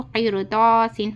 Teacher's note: رائے ساکنہ سے پہلے زیر آیا اور اس کے بعد حروف مستعلیہ کا لیٹر قاف آیا، اس لیے ہم اس کو باریک آواز نہیں پڑھنا، موٹی آواز پڑھنا۔